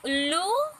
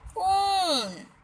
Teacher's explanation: उल्लू हम जल्दी बोल देते हैं और ऊन थोड़ा लंबा गया